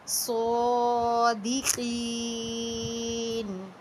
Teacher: یہ نون پر زبر تھی جس کو ہم نے ساکن کر دیا۔